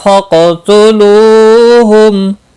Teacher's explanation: قاف مستعلیہ ہے، پر پڑھا جائے گا، ساکن بھی ہے، اس پر قلقلہ بھی ہوگا